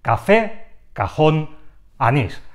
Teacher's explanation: tiene el golpe de voz en la última sílaba